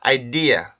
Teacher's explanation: 그래서 I dare 이렇게 혀를 띄우게 되면 R 발음이 끼니까 혀를 내린다고 생각을 해보세요. 혀끝을 아래 치조 쪽으로 내린다고 생각을 해보면 idea 이렇게 R 발음 소리가 없어집니다